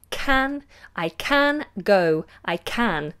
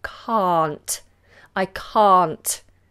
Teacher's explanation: we have a long vowel open mouth